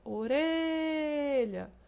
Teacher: paroxítona com acento tônico encontra-se na penúltima sílaba